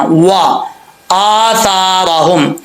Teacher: वाव को होंठ गोल करके पढ़ेंगे · यहाँ पर हमजा के ऊपर स्टैंड जबर है, खड़ा जबर है, इसको एक अलिफ की मिकदार लंबा करेंगे। अक्सर लोग इसको छोड़ देते हैं, लंबा नहीं करते, व आसारहुम पढ़ देते, ऐसा नहीं पढ़ना।